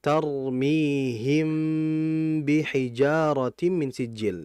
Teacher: Dan gunnah ini ada bukan pada huruf yang kedua, bukan pada ba-nya, melainkan pada huruf mimnya. Sehingga huruf mim lebih dominan dibandingkan huruf ba. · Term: ikhfa syafawi